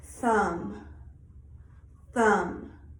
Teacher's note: the th in the keyword thumb is a whispered sound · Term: voiceless